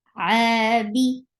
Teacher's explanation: And for Dhamma, circle your lips very well. Ain from your throat, and it is 2 counts long, because this staggering fatha is actually a complete alif.